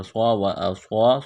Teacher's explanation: صاد کو موٹا کرنا ہے، سیٹی کی آواز پیدا کرنی ہے ، ایک الف کے لمٹ میں کھینچنا ہے، اس کاف کو